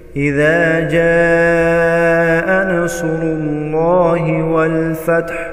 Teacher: हा को वस्त हलक से अदा करेंगे।